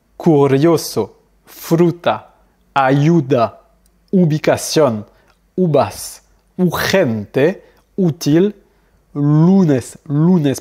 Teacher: Le U, comme j'ai dit tout à l'heure, lui, il se prononce comme OU. Le son U, lui, n'existe pas, donc ça sera toujours OU.